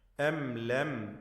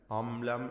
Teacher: സാക്കിന മീമ് ഇൽഹാർ ഷഫവിയാണ്, മണിക്കാതെ വെളിവാക്കണം.